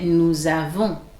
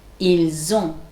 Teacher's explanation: Avoir start with a vowel A usually. So we need to do the liaison. Like nous, between nous and avons.